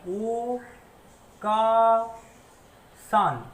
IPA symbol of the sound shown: aː